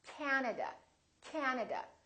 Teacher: at another word that has three syllables and also Three A's this time the first syllable is stressed this time this a is really long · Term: vowel length